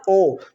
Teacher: ओठ आपका गोल बन रहा है और कंठ में कंपन हो रहा है, ओ, कंठ में कंपन भी हो रहा है और ओठ गोल बन रहा है, तो कंठ औष्ठम। · ओ बोलने में मुंह गोल बन रहा है ना, होठ गोल बन रहा है, कंठ में कंपन हो रही है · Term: कंठ ओष्ठम